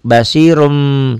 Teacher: bunyi Nun matinya berubah menjadi mim mati